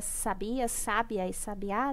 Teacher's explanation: a mudança da sílaba tônica em cada uma das palavras e a mudança do significado